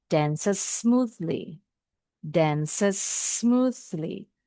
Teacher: Bunyinya satu aja, tapi S-nya agak dipanjangin, agak ditekan.